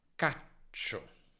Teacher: Per fare la versione doppia di questi suoni, come sempre nelle affricate, si allunga la fase di chiusura e si accorcia la vocale precedente